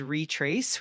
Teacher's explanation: the word is pronounced as retrace with the emphasis on the second syllable.